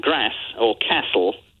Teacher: you can pick up the sort of South Walian strangulated R sound